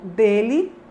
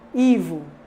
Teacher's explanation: Esse I final que surge aí é um I que é reduzido, que não tem a mesma força que o I da palavra Ivo